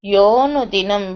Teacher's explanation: visarga will become o, so yaha becomes yo